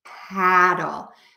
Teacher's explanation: the word paddle which has that very open American a sound